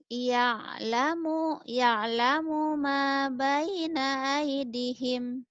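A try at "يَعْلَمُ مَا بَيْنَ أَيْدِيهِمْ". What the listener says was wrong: Aidihim panjang. Ya'lamu ma aidihim panjang. Ya'lamu ma, tekannya di ma. Ya'lamu ma baina aidihim. pendek. Baina aidihim. Ya'lamu ma, pelan-pelan.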